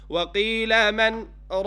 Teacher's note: a pause without taking a breath. You do not take a breath and saying وَقِيلَ مَنْ رَاقَ. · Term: sect